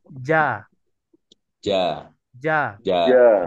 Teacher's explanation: kalau tidak ada udara, dia masuk sifat jahar, bukan sifat hamas.